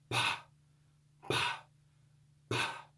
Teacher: Because we're taking the simple mutes, P, kappa, and tau, and instead of voice, we're adding aspiration or rough breath, rough breathing. If we take the sound of the simple p, p, p, the popping of the lips of P, and we add a rough breath, we add aspiration, we get the sound pa, pa, pa, popping of the lips with aspiration. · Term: aspirated mutes